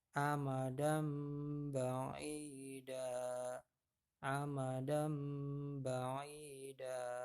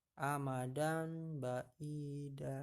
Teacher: Tulisannya dan, dal fathah tanwin, dal fathah tanwin. Karena bertemu dengan huruf ba maka harus dibaca mim mati ya. · Menurut istilah artinya jika terdapat nun mati atau tanwin bertemu dengan huruf iklab maka dibaca membalik menjadi mim ya. Jadi bunyi tanwin atau nun matinya itu dileburkan, dibalikan menjadi bunyi mim ya. Jadi n-nya hilang jadi m gitu ya kalau di bahasa Indonesia kan itu ya.